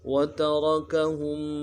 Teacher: را کو موٹا کریں گے، ہم میں میم ساکن غنہ کریں گے